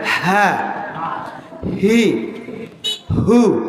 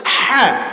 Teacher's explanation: তাহলে গোল হা উচ্চারণ করতে হবে হ্যাঁ, আর লম্বা হা উচ্চারণ করতে হবে হলকের মাঝখান থেকে গলা চাপ দিয়ে হ্যাঁ।